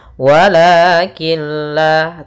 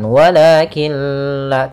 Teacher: masukkan huruf nunnya atau tanwinnya ke huruf lam sehingga Nun suara nunnya hilang dan tinggallah suara lamnya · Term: idgham bilagunah, idgham bila gunnah